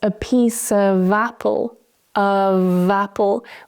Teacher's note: Now, in the sentence a piece of apple, of apple, we keep that v sound. We keep the vibration, because the next word starts with a voiced sound.